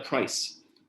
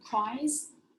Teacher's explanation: the z sound became a s sound